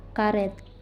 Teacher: direalisasikan sebagai bunyi angka 3 terbalik apabila berada pada silabel tertutup